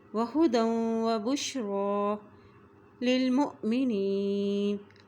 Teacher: را کے اوپر کھڑی زبر ہے ایک حرکت لمبا پڑھیں گے